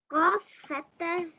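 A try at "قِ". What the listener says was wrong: No, kasra. Qaf kasra. Qi.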